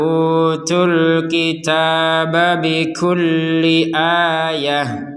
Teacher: dibaca sukun karena berhen berhenti alkitab Nah huruf ba-nya dipantul dipantulkan jika melanjutkan kepada potongan kata berikutnya maka pantulannya hilang berganti kepada harakat awal yaitu fathah